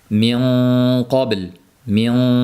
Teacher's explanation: mana shunday yug'on talaffuz qilinadi min qobil bo'lib ingichka qilinmaydi